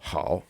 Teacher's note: that fourth tone it's not a punch in the gut tone it's a vocal fry